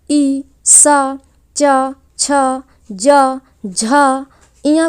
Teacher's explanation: तालव्य वर्ण या तालव्य व्यंजन जिनका उच्चारण स्थान तालु के द्वारा होता है, वो तालव्य वर्ण कहलाते हैं। इसके अंतर्गत ई, सा, चा, छा, जा, झा, इया को रखा गया है।